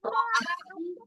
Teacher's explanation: a-nya mad tabi'i 2 harokat